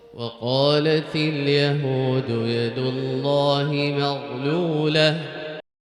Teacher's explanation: Notice how he recited this part at a lower tone than what he usually does. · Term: lower voice